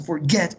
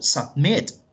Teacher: Forget, en este caso forget, lleva el acento, el stress, en la última sílaba y termina en consonante, vocal, consonante.